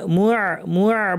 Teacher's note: মু বলার সময় ঠোঁট গোল, আইন বলার সময় ঠোঁট স্বাভাবিক, গলায় চাপ দিব।